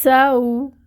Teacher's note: سین کو باریک ادا کریں گے، سین میں سیٹی لے کے آئیں گے، اس کی صفت ہے۔